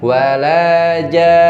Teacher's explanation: Nunnya berhubung di sini bertasydid ditahan guna 3 ketokan.